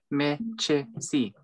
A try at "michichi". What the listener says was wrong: Chi. No, the same thing. Michi. Chi. It just repeats.